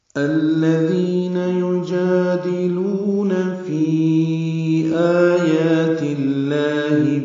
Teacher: یجادلون میں جا الف مدہ، لو وہ مدہ ہے، دو حرکات لمبا کریں گے